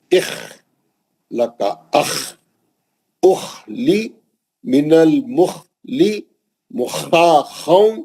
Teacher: خا کھردرا پڑھنا ہے, موٹا اور بھاری پڑھنا ہے مستعلیہ ہونے سے, اور اس کی ادائیگی کے وقت آواز اوپری حلق سے نکالنا ہے